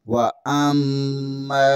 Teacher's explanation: حمزہ زبر کو میم کے ساتھ ملائیں گے، میم مشدد ہے، یہاں پر غنہ لازمی ہوگا۔ میم زبر کے آگے الف مدہ ہے، اسے ایک الف کے برابر کھینچیں گے۔